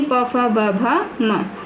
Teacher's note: ये ओष्ठ यानी होठ से बोले जाने वाले वर्ण हैं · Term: ओष्ठ्य वर्ण